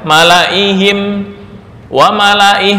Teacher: Malaihim nggak boleh dibaca malaihim, nggak boleh. Malaihim wa malaih walaupun ada alif ya, itu dibaca pendek.